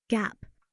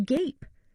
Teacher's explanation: look at the word gap. It's pronounced with a short A sound, ah. But when you add an E to the end, it changes to gape, with a long A sound, A. The E is a silent E.